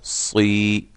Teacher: آگے پھر با زبر با، سمیعم با، صاد زیر یا صی، یا مدہ ایک الف کی مقدار کے برابر اس کو لمبا کیا